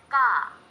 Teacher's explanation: Meanwhile, ga does not need you to push out much air, but you should use your vocal cords more.